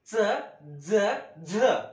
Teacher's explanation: दाताच्या आतमध्ये आणि कठोर तालूच्या मध्ये. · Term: दंतमूलीय